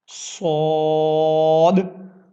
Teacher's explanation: سین کی طرح اس میں بھی آپ نے ایک وسل کی آواز بنانی ہے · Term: وسلنگ حروف